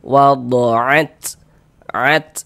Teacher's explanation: Jadi ada nafas yang mengalir ketika kita mengucapkannya. E karena huruf ta ini dia salah satu huruf yang memiliki sifat hamas.